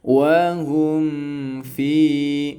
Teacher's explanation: Nah, maka harus dibaca idh qudiyal amr, seperti itu, ada roknya kebaca seperti itu ya. Wahum fi, mimnya jangan langsung ditarik karena sifatnya tawasud, tengah-tengah antara syiddah dan rokhawah. Wahum fi-nya panjang 2 harokat.